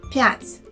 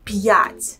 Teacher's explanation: notice that there is no u sound in the middle of the word